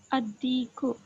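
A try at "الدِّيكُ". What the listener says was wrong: Ad-diku. Okay, correct.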